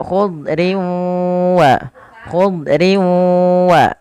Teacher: wau sehingga bukan lagi dibacaq tapi ditahan dengan guna sepanjang dua harakat